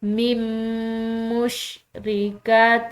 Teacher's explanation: نون کے پیچھے والے حرف سے ملائیں گے تو درمیان میں نون ساکن جو ہے یہ بالکل خاموش۔